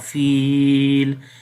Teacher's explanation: There is kasra under the lam right now, but when we stop, there will be sukun sign come, and we skip this kasra under the lam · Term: madde ariz